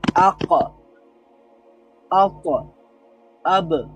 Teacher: হরফুল কলকলাতে রয়েছে কফ, ত, বা, জিম, দাল। এখানে এই হরফগুলোতে যদি সুকুন হয় অথবা এই হরফগুলোতে যদি আমরা ওয়াকফ করি অর্থাৎ থামি, তাহলে এই হরফগুলোতে একটা পাল্টা আওয়াজ রিপিট হবে, পাল্টা আওয়াজ তৈরি হবে।